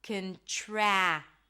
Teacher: TR, which turns into a ch sound, ch, and then the as in cat, contract.